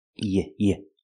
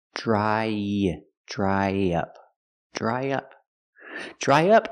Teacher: to link the vowel I dry to the short uh in up we need a sound in the middle y